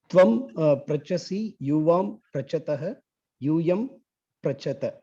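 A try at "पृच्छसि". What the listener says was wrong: You are saying the same thing. It's not pra. It is pr. Prichasi, prichataha, prichata. Dhatu is prach. But the form of the dhatu verbal form is pricha. Prichasi.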